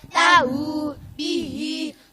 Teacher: Masilah qasirah, setiap hi dan hu yang dibaca panjang, panjangnya satu alif atau dua harokat.